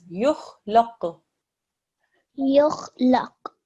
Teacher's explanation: don't do qalqala on the kho